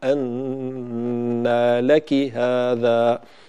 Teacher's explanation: لك لا نبالغ في الكسرة حتى تصبح ياء